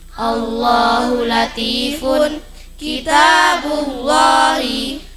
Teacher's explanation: Lafaz Allah didahului fathah doma tebal bacanya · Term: lam jalalah tafkhim